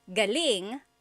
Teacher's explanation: if the emphasis is on the second syllable, galing, that means good or great or excellent.